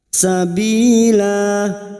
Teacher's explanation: jika wakaf di ayat 67 maka huruf lam kita panjangkan dua harakat Sabila dan jika dibaca wasal atau terus maka harus dibaca pendek